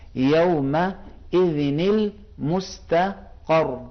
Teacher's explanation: الی ربک یومئذ، اب ملاتے وقت کیونکہ تنوین بھی خود ایک نون ساکن ہے، اس کے بعد والا بھی حرف ساکن ہے. جب 2 ساکن آپس میں جمع ہوتے ہیں تو یہاں سے نون قطنی کہتے ہیں، ایک نون لگاتے ہیں